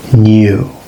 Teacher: British English, as opposed to American English, has the palatized N.